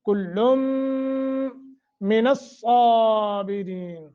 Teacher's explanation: ملا دیا، تو غننے کے ساتھ پڑھیں گے، کلم من الصابرین، صاد جو ہے سیٹی کے ساتھ اور موٹا کر کے، پھر آگے را جو ہے اس کو باریک پڑھیں گے ، وَأَدْخَلْنَاهُمْ، وہ موٹا، دال پہ قلقلہ، نون کو تھوڑا سا